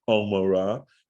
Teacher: the way an ayin is pronounced is down in the throat, like Omorah